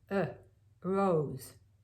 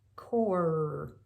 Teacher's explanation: it's almost just like a schwa just like that neutral vowel that shows up all over the place